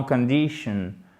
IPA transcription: kənˈdɪʃ.ən